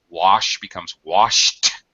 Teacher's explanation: just an air sound not voice that's called an unvoiced sound we end up with uh wash becomes washed with a t